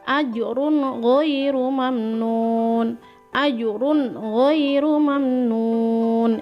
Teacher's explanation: Selanjutnya, jika ada tanwin bertemu dengan ghain, contoh bacaannya adalah ajrun ghairu mamnun. Tidak boleh didengung, ingat, ajrun tidak boleh. Harus ajrun ghairu mamnun. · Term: izhar halki